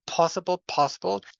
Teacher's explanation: So possible that is aspirated. So I found an instance of an aspirated P.